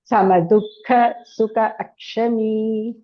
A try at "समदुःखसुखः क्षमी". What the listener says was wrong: सुखः क्षमी not अक्षमी सुखः क्षमी सर्गा should be सुखः क्षमी not सुखः क्षमी important sandhi rule संतुष्टः सततं योगी यतात्मा दृढनिश्चयः